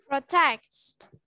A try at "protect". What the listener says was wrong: Protect. No, no S. No S. Protect.